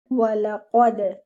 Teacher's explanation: Qaf is heavy letter without air. Okay. So join your qaf with the dal and read your dal with qalqala.